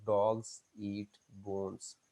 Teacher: पहले देखिए हमने इंफॉर्मेशन स्ट्रेस किया डॉग्स को और बोन्स को, हमने वर्ब को छोड़ दिया